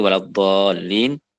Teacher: karena ada Mad yang ditasdidkan maka harus dibaca enam harakat